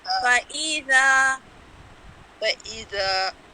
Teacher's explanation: جو ذا ہے نا اس کو بہت لمبا نہیں کرنا، ایک الف کے برابر